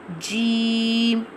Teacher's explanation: pronounced from the middle part of the tongue touching the middle part of the palate